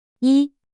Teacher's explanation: First tone high flat stays high and steady.